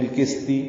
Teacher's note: سین کو باریک کرتے ہیں تو قاف کو کاف پڑھ دیتے ہیں